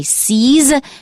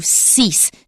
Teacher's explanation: Do not mix up the voiced S and C's with the voiceless S and cease.